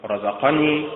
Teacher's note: رزقني متعل بالنبر على حركة الراء